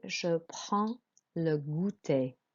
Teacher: With prends, you don't pronounce the D and the S. You're not pronouncing consonants at the end.